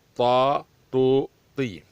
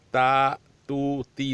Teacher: طا تھوڑا موٹا ہے، اس کی ادائیگی تا جیسی ہے لیکن موٹا ادا کرنا پڑے گا۔ طا تو تی، تا تو تی نہیں ادا کیا جائے گا کیونکہ یہ پتلا ہے، یہ اوپر تا تو گزر گیا، یہ موٹا ہوگا۔